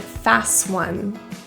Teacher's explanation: The T in fast is deleted. It has a consonant in front of it and behind.